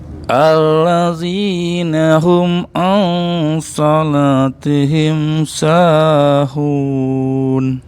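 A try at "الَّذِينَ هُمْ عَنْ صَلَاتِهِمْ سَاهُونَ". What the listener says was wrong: Baik. Sanya Bapak kepanjangan. Sahun itu aja. Sahun.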